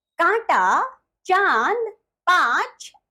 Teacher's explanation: यह अनुनासिक है। इसका उच्चारण नाक और मुंह दोनों से किया जाता है